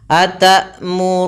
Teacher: hamzah itu bunyinya suaranya tertahan dan dia juga nafas kita ditahan